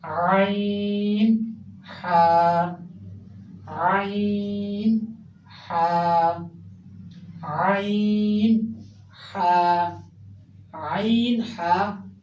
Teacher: हलक के बिल्कुल दरमियानी हिस्से से अदा हो रहे हैं, जो बिल्कुल दरमियान में है, हमारा हलक का बिल्कुल दरमियान है, जहाँ ये हड्डी भी होती है, यहाँ से अदा हो रहे हैं।